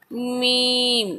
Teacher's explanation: ये दोनों होठों के खुश्क हिस्से से लगकर मीम अदा होता है